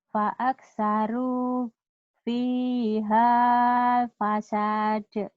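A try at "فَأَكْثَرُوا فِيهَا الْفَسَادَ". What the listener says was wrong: Matobinya nggak jadi panjang. Pihal. Jadi pendek ya. Fa'aksaru fihal fasad.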